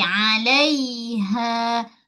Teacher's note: Lai al suara pada ya mati sebelumnya bar atas alaiha pada ha bulat pastikan dibaca dengan dua harakat mad asli